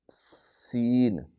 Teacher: سین، یہ باریک سیٹی ہے